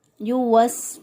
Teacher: الذی یوسوس، یوسوس، واو کو سین کے ساتھ ملایا، سین کی ادائیگی میں سیٹی جیسی آواز آنی چاہیے